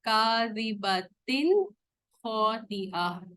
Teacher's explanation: تنوین کے بعد خوا آ رہا ہے جو حروف حلقی ہے, تو یہاں پر اس کو ہم نے کلیئرلی پڑھا, تو یہ اظہار کا رول ہے.